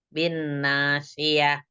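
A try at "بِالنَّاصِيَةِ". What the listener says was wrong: Shad. Bin nasiyah. Pakai shad ya, Insya Allah. Kurang diangkat sedikit sih.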